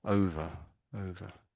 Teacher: So the schwa sound, I guess, on the end, isn't it?